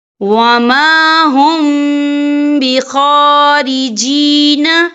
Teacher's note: تو یہاں پر اخفا شفوی ہوگا، اور ہم یہاں غنہ بھی کریں گے، اور غنہ کی مقدار جو ہے 2 سے 3 سیکنڈ ہوگی۔